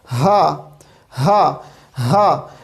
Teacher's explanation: ہا حلق کے اس حصے سے ادا ہوتا ہے جو کہ سینے کی طرف ہے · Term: اقصی حلق